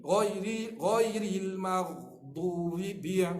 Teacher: ba huruf syiddah, kemah. Ba jahar terang. Jangan ambil v, jangan v.